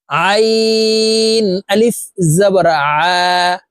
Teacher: আইন হরফ হালকের মধ্যখান থেকে চাপ দিয়ে উচ্চারণ করতে হবে, কারণ আইনের মাখরাজ হালকের মধ্যখান থেকে হবে।